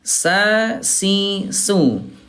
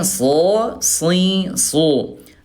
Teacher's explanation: kalau sin dia istifal turun pangkal lidahnya, kalau shad dia al isti'la terangkat pangkal lidahnya